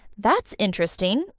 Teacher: if I say, that's interesting, with a rising tone and genuine curiosity in my voice, it means I really think it's interesting.